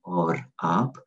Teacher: we really roll our R's in Hindi and Urdu